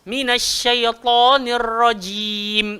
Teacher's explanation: Bagi hak jim tu tengah-tengah lidah, langgar le langit.